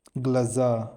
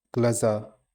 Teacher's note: Stress is on the last syllable.